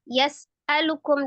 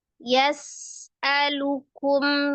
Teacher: sin itu sifatnya adalah al-hams, mengalir nafas, kemudian roghah, mengalir suara. Jadi nafas dan suaranya mengalir. Kemudian memiliki sifat khusus yang tidak memiliki lawan di huruf sin adalah as-safir, desisan.